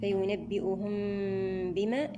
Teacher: إتمام حركات الضم في الهمزة والهاء. فينبئهم بما، الميم مع الباء، هنا إخفاء شفوي، الميم مع الباء إخفاء شفويا.